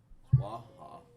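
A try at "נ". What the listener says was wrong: That's an N, is what that is.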